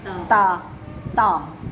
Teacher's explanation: یہ جو ہماری زبان ہے نا، جب آ کے اندر والی سائڈ پہ اوپر والے دونوں دانتوں کو ہم کہتے ہیں ثنایا اولیا، جب ہماری لسان جو ہے ثنایا الیہ کے اندرونی جڑ میں مضبوطی کے ساتھ لگتی ہے تب ہمارا تا ادا ہوتا ہے. تا تا جب ہم تا بولتے ہیں، یہ جو زبان ہے ادھر ٹکراتی ہے، ہاں اندر تا تا، ٹھیک ہے. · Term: مخرج